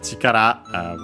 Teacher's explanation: accent on the last syllable